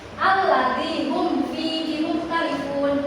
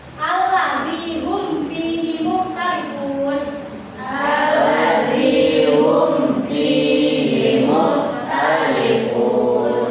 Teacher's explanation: Dibacanya jelas. Jadi si mim sukunnya itu terdengar jelas gitu, tidak didengungkan ataupun disamarkan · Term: izhar syafawi